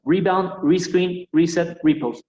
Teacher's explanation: Todas esas palabras también van siempre, la sílaba tónica, perdón, siempre la primera, la del re, en este caso.